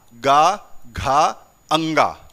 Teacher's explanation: जैसे ही गा से स्टार्ट किया, गा, घा, अंगा, यहां से कंपन क्या हो गया, बहुत ज्यादा महसूस होने लगा